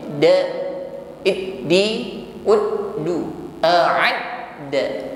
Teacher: huruf dal tasydid ditekan membacanya, maka nampak sifat yang menyertainya yaitu asyiddah. Inhibas jarayan as-shaut 'inda nutqi bil harfi, tertahan aliran suara kita ketika mengucapkan hurufnya.